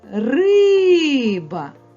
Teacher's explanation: звук и вимовляється з більшою силою і довготою і на нього вказує знак наголос звук и наголошений риба котик